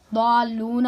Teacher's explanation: جو قاعدہ کون سا لگے گا مضاف کا؟ وہ یہ پہلے لام کی حرکت کو ساکن کر دیں گے. ہاں ساکن کریں گے، پھر ان کا آپس میں ادغام کر دیں گے